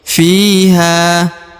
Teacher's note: Fi diayun sekali atau dipanjangkan dua harakat karena di depannya terdapat ya berharakat sukun